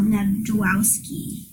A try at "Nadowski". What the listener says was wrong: The J is silent.